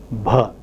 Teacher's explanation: Now, plosives from the bilabial position to the velar position can have 4 different laryngeal states normally, that is voiceless, unaspirated p, voiceless aspirated p, voiced unaspirated b, voiced aspirated or murmur or breathy sound such as bh